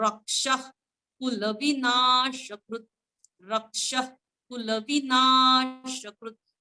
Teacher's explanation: क्ष जो आहे क्षत्रियाचा त्यामध्ये क हलका क आहे म्हणून रक्ष रक्ष नंतर विसर्ग त्याचं उच्चारण ख सारखं